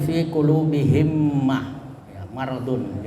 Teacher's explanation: Jadi mimnya dimasukkan ke dalam mim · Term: idgham mimi